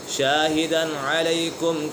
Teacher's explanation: تنوین کے بعد حروف حلقی میں سے عین آ گیا ہے تو یہاں اسی وجہ سے اظہار حلقی ہوگا، یعنی غنہ نہیں کریں گے۔